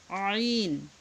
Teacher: এটা আইন গলার মধ্যে ডাবিয়ে তারপর উচ্চারণ করতে হবে।